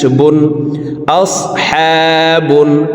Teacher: হারফকে তিন আলিফ টেনে লাস্টের এই বা হারফকে সাকিন করে ফেলব বা যেহেতু কলকলার হারফ নিচের দিকে ধাবিত করে বাকে সাকিন করব